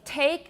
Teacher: that's a t that's aspirated